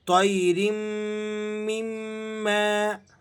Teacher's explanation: دونوں میم مشدد ہیں تو دونوں کو آپ نے سختی کے ساتھ اور جماؤ کے ساتھ ادا کرنا ہے